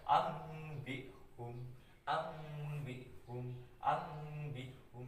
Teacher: Jadi nun matinya dibaca seperti mim mati ya, itu iklab.